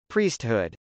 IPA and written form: prˈisthud (priesthood)